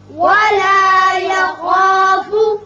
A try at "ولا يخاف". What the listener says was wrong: خا چونکہ پر پڑا جاتا ہے حروف مستعلیہ میں سے ہے، اس کی وجہ سے الف بھی پر ہوگا. ولا یخاف نہیں پڑھنا بلکہ ولا یخا خا کر کے ولا یخاف